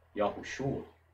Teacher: O O quase desaparece, o A fica destacado.